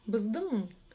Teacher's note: ударение падает на последний слог. Как вы знаете, если стоит буква «ы» или палочка с точкой, как правило, в счет того, что эти буквы произносятся очень коротко, как правило, ударение перескакивает на слог вперед.